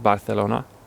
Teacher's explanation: pronouncing it with a sort of soft th sound